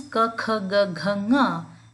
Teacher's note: ka, kha, ga, gha, nga and the letter ha, these originate from the throat